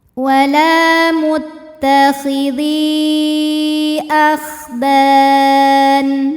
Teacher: Mad tabi'inya ya sukun didahului kasrah pada kata muttakhidhi, hamzahnya a pada kata akhdan, maka huruf dal kita panjangkan boleh 4 boleh 5 harokat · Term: mad jaiz munfasil